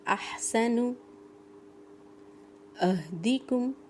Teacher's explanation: सीने से आवाज़ आ रही है, ये हा से बिल्कुल डिफरेंट है